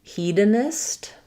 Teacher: So we have first syllable stress. Letter E says the E sound.